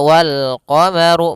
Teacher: Kemudian pada lafaz ru, ru-nya dibaca tebal karena dia huruf ra yang berharokat dhammah.